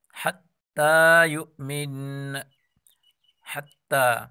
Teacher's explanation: تا کو بھی ایک الف کے برابر کھینچ کر پڑھیں گے